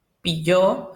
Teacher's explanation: una semi consonante en medio de las dos vocales lo cual es un rasgo caracterizador del español hablado